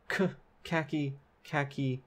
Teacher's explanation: khaki has an aspirated K and an unaspirated K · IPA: [kʰæki]